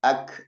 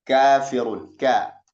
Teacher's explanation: Kata kemudian makhrajnya huruf kaf ini pangkal lidah dengan langit-langit. Jadi pangkal lidah kita ditempelkan kepada langit-langit. Tentu saja di bawah sedikit makhraj qaf, ya.